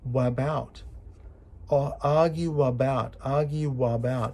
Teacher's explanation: joining U and a becomes a w sound